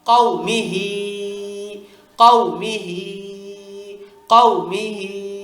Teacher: কওমি পর্যন্ত কোন টান নেই শুধু হিতে টান নিব আমরা